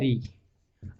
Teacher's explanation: रे का उच्चारण हमारे मुख के अंदर जीभ लुंठित होती हुई बाहर निकलती है, प्रकंपित होकर के वो ध्वनि बाहर निकल रही है। तो ये हो गया मूर्धन्य।